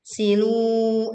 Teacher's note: Ini juga tebal karena ro sukun didahului dhammah. Silu, lu-nya panjang 2 harokat